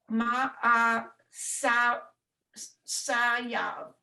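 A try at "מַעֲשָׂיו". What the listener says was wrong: So ma'asav. The yud is silent and it ends with a V sound. Ma'asav.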